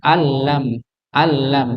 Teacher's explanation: idgham bila ghunah ini sama sekali dengungnya enggak ada langsung masuk ke lam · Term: idgham bila gunah